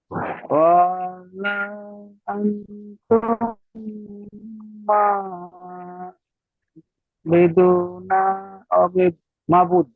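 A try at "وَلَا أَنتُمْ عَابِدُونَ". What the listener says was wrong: সব টান কেলেঙ্কারি হয়ে গেছে, বুঝতে পারছেন? সুন্দর করে পড়তে হবে আরো। ওয়ালা বলেছেন, ওয়া টান হয়ে গিয়েছে, ওয়াও টান দিলে হবে না, ওয়াও জেবার ওয়া হারাকাত আছে।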